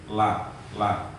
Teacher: huruf lam itu keluar dari ujung tepi lidah. Ujung tepi lidah samping kanan atau kiri.